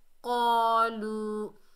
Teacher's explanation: واو ساکن ہے، یہ واو مدہ ہے، ایک الف کی مقدار کھینچ کر پڑھیں گے